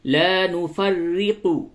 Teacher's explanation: را کو باریک پڑھیں گے، کیوں؟ رائے مشدد کے نیچے زیر ہے، یہ باریک ہوگی